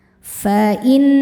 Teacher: Karena nunnya bertasydid, cara bacanya didengungkan. Tahan dengungannya kurang lebih dua harakat. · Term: ghunah musyaddadah